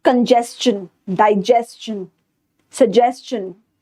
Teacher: any word that ends with STION, we pronounce it as chun.